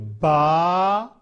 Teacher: बा, ये जो है दोनों ओंठों को जो है वो अंदर से आपस में मिलाएंगे। दोनों ओंठों को अंदर से मिलाकर बा को अदा करेंगे।